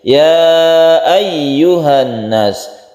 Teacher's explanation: tasydid ya-nya harus kita tekan ke ya-nya agar tasydid itu bisa sempurna